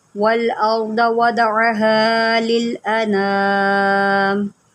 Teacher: یہاں پر دیکھیں وَالْأَرْضَ، اس کو ہم نے وَالْأَرْضَ نہیں پڑھنا، ہم نے یہاں پر را کو بھی موٹا کرنا ہے اور ضاد کو بھی موٹا کرنا ہے، کیونکہ ضاد جو ہوتا ہے نا یہ حروف مستعلیہ میں سے ہوتا ہے، اس کو ہم موٹا کر کے پڑھتے ہیں۔